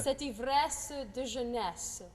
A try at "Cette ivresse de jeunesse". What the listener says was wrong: Yeah, the jeunesse sounds a little American. Jeunesse. Yeah, don't get jeunesse, but jeunesse.